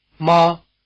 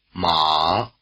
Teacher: the distinctive difference between the two tones you just heard is that one is high and one is low · the first tone or high tone word mother and the third tone or low tone word horse